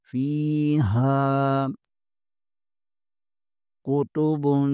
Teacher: یہاں پر با کے اوپر دو پیش ہے، آگے قاف حرف اخفا میں سے ہے، یہاں پر اخفا ہوگا اور قاف کو پر بھی پڑھیں گے۔